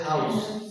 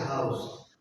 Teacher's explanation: So it means the vowel, the consonant, the final consonant sa changed into za